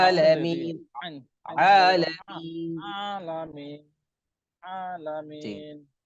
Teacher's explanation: গলার একেবারে ভিতর থেকে আইন